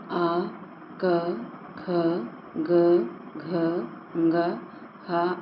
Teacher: इन वर्णों का उच्चारण स्थान क्या होगा कंठ होगा